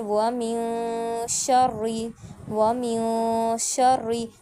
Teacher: نون کی آواز ناک میں لے کر جائیں گے، ٹھیک ہے، 2 سیکنڈ کے لیے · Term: غنہ